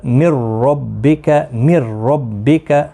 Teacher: نون جو ہے حذف ہو جائے، پڑھا نہیں جائے گا کیونکہ نون ساکن کے بعد را مشدد ہے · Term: ادغام